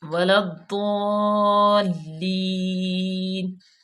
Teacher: اور یہاں پہ آپ کو بتا دوں ولا الضالین. ٹھیک ہے، یہ ہے مد عارض، یہ مد عارض ہے اور اس کو ہم جو ہے وہ کافی زیادہ اس کو لمبا کریں گے · ٹھیک ہے، واؤ زبر وا لام یہ الف زائد ہے، اس کو ہم ڈائریکٹ الف لام لام تعریف ضاد میں لام کو ملا دیں گے، ضاد پہ شد ہے اور اس پہ سختی کریں گے اور موٹا بھی پڑھیں گے